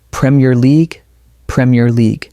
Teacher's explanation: The stress is on the first part, Premier, and the second part flows naturally with league.